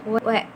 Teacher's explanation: gabungan dari membulatkan bibir dan mengangkat belakang lidah W. Jadi kayak ada bulatan bibirnya juga, tapi ada angkatan dari si lidah belakang juga.